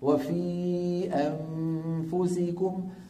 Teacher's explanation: اطراف اسناني العليا عند الشفه السفلى لكن من غير ضغط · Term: حرف الفاء